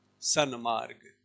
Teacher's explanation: तो अनुनासिक का मतलब नाक वाला अक्षर लिखना। तो ये जो न है ना, तवर्ग का पंचम जो है न, वो नाक वाला अक्षर है, अनुनासिक है, इसलिए हमने त के स्थान पर न कर। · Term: अनुनासिक संधि